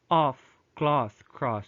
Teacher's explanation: the lengthening of short o to oh